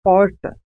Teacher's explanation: há um movimento de retroflexão da língua em direção ao fundo da boca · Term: R retroflexo